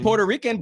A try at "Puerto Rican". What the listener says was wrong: roll your R's harder.